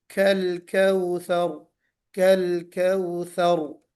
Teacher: रा पुर करेंगे जब हम रुकेंगे, वक्फ करेंगे तो भी, और अगर बाई चांस हम मिला के पढ़ते हैं तो भी पुर पढ़ेंगे